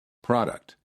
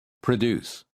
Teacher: In the first word, the first syllable is stressed, and therefore the P-R-O sounds like pro. And in the second word, the first syllable is reduced, and the P-R-O sounds like pr. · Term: stressed and reduced O